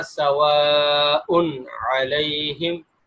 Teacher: تنوین کے اندر جو نون کی آواز آتی ہے وہ آواز بھی صاف ظاہر ہو رہی ہے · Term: اظہار